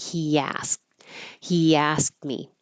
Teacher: intrusive y or sometimes I call it a hidden y because you're going from the very high sound Inus e is very high and then the a is very low